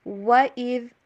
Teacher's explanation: وَإِذْ، واو کے اوپر ہونٹوں کو گول کیجئے، اور ذال جو ہے نا اس کو نرمی کے ساتھ ادا کیجئے، جو سامنے والے دو دانت ہوتے ہیں اوپر والے ان سے زبان کی نوک کو تھوڑا سا باہر رکھیں